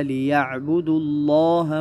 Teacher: لفظ اللہ کو، لفظ جلالہ کو موٹا پڑھے